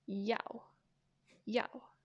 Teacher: second tone yao put the tone on the a yao yao just downward this is the downward tone so short and quick